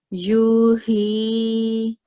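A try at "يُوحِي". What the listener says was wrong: This U was a little short. Can you try again? And remember, ha has a prominent sound. It comes from the middle of the throat. So we should also be mindful of that.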